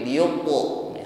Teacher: Dan ketika memantulkan huruf ta, ingat tidak ada nafas yang mengalir. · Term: qalqalah